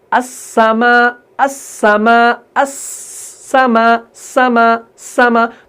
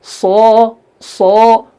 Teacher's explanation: सीन जो है ये बारीक है, सौद पुर है